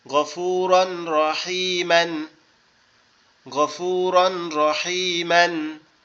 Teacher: তাসদিদ দিয়ে গুন্না ছাড়া মিলিয়ে পড়তে হবে। এখানে গুন্না করা যাবে না, তাসদিদ দিয়ে গুন্না ছাড়া মিলিয়ে পড়তে হবে।